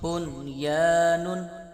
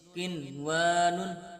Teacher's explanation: بغیر غنے کے اظہار مطلق کا قاعدہ لگ رہا ہے، اس لیے غنہ نہیں کریں گے، بغیر غنے کے ان 4 حروف کو پڑھیں گے۔